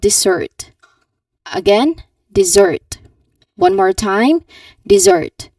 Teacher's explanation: So the stress should be on the second syllable.